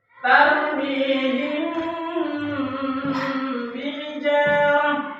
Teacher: Dan cara membaca ikhfa syafawi yaitu dengan suara yang samar antara huruf mim dengan huruf ba. Kemudian ditahan kira-kira 2 harokat atau 2 ketukan, ya, sambil mengeluarkan suara ikhfa dari pangkal hidung.